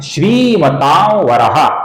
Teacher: ये जो अनुस्वार है दोस्तों, इसके आगे वो आने के कारण अनुस्वार की जगह पर हम अपूर्ण वो का उच्चारण, हल्के से वो का उच्चारण करते हैं